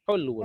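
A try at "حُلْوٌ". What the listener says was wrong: Enggak pakai lamnya mati. Hulwun.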